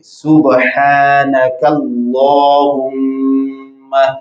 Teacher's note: اور دوسرا اس کاف کو باریک پڑھیں گے، یہ سٹک والا کاف ہے، اور اس میں جلالت سے پہلے چونکہ زبر آ رہی ہے تو موٹا پڑھیں گے